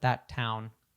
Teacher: we only say one of the consonants in that case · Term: elision